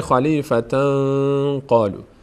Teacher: اینجا اخفا میشه، یعنی مخفی میشه نون در بینی، میشه خلیفتن قالو.